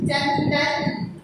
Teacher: मुंह से बोलते बोलते नाक से भी उसकी आवाज निकलती है, ध्वनि निकलती है। नासिका यानी नाक, ठीक है। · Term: अनुस्वार